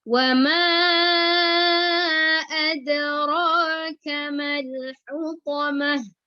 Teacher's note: Meskipun dia berbaris kasroh dan dhamma, kedudukan tempat keluarnya huruf ha tetap di tenggorokan bagian tengah.